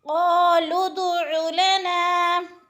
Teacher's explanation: دال پہ قلقلہ بھی ہے، دال کو ہلا کے پڑھنا ہے۔ قالوا ادع لنا، لنا پہ جو ہے الف مدہ ہے ایک الف کے برابر کھینچ کر۔